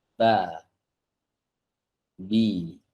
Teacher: Huruf ba asalnya mingkem dulu bibirnya. Kemudian dijauhkan dari makhrajnya saat dia berharokat. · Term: huruf berharokat